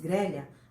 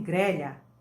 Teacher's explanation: Com o E fechado. Outros dizem grelha, com o E aberto, né? Grelha e grelha, né?